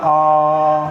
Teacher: विव्रत स्वर जिसमें पूरा मुंह खुलता है आ बोलने में।